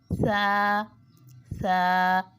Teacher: सा नरम रूफ में से है जबान की नोक से अदा होता है · سا نرم حروف میں سے ہے، زبان کی نوک سے ادا ہوتا ہے